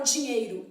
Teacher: na palavra dinheiro eu tenho um ditongo decrescente o Ei